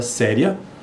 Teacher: esse ditongo crescente está ocorrendo lá no final da palavra séria depois do acentuação tônica